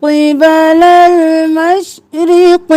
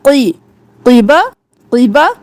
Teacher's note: قاف موٹا، قی کی نہیں کرنا